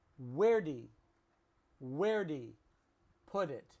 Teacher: Where did he is reduced to where'd he